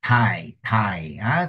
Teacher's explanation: dentals T and D are pronounced with the tip of the tongue placed against the front teeth